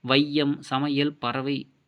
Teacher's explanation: வையம், சமையல், பறவை என சொற்களில் முதல், இடை, இறுதி ஆகிய இடங்களில் வரும் பொழுது தனக்குரிய 2 மாத்திரை அளவிலிருந்து குறைந்து ஒலிக்கிறது. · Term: ஐகார குறுக்கம்